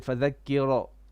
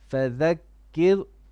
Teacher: Okay, and now make your ra on فَذَكِّرْ more flat, and there's a bit of bouncing on your ra